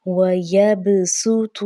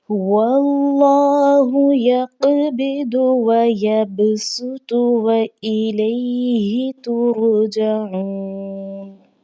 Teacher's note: سین سیٹی کی آواز آنی چاہیے، باریک آواز ہونی چاہیے